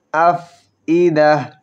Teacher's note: ফা একটু ধরে রেখে বাতাস ছাড়ব